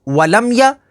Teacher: میم ساکن کے بعد یا ہے تو یہاں پر اظہار شفوی ہوگا